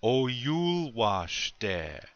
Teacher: notice where I put the accent on the second syllable